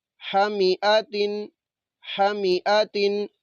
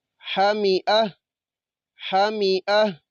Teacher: جب وقف کریں گے تو اس تا کو ہم نے ہا ساکنہ سے بدل دینا ہے، اس کو پھر ہم نے ہا پڑھنا ہے